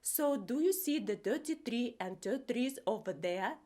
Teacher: Th turns into t and the is simplified to d.